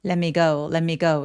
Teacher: 빠르게 발음하게 되면 let me go, let me go 이런 식으로 요게 N처럼 소리가 어 나게 됩니다.